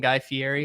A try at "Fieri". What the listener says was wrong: The R is pronounced.